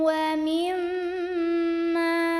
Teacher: ada hukum ghunnah musyaddadah karena ada Meme yang bertasydid maka cara membunyikannya bunyi omnya ini ditahan dulu